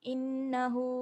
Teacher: Innahu hu panjang 2 harakat sebab ada alif ada waw kecil.